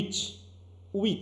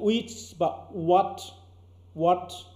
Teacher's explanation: ঠোঁট কাছাকাছি আসছে কিন্তু একদম টাচ করেনি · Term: অ্যাপ্রক্সিমেট